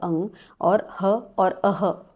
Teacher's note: अः यानी विसर्ग का उच्चारण भी हम लोग कंठ से करते हैं। इसलिए इसका उच्चारण स्थान है कंठः जिसको हम लोग बोलेंगे कंठः।